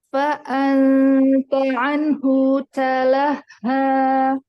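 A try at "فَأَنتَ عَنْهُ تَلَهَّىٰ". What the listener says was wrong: Hu-nya jangan dipanjangkan. Kalau hu ya yang dipanjangkan itu kan yang matsilah sugro atau matsilah kubro.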